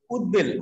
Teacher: উৎ উপসর্গের সাথে যদি ব ফলা থাকে তাহলে ব এর উচ্চারণটা বজায় থাকে